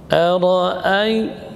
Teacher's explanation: penyebutan a tidak boleh cenderung ke ya, bukan ai tapi ai, ya. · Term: madlin